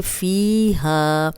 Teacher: فیہا یا مدہ ہے، جزم والی یا پیچھے فا پہ زیر، 2 حرکات لمبا ہوگا۔ ہا الف مدہ ہے، یہ 2 حرکات لمبا ہوگا۔